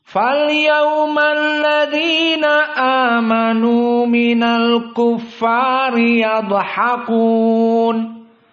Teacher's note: aljumhur membaca amanu mad badal asalnya amanu maka dibaca Hanya dua harakat saja